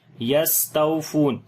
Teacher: سین کے اوپر صفت صفیر سیٹی کی آواز کریں گے اور سانس بھی جاری کریں گے، ہمس ہے، تاؤ یہاں پر واؤ یہاں پر لین ہے نرم پڑھیں گے، اور فا کے بعد واؤ جو ہے مدہ ہے یہاں پر لمبا کریں گے۔ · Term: واؤ لین, واؤ مدہ